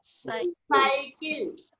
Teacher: तो हम साइकिल में पहले सीटी की आवाज आएगी, बाद में सा निकलेगा।